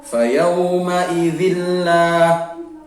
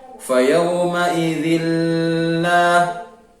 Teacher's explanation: Kemudian pada lafaz fayauma idzillah itu adalah hukum bacaan idgham bila gunnah, yaitu dengan cara memasukkan suara tanwin kepada lam dengan tanpa dengung. Fayauma idzillah tidak boleh dibaca jelas.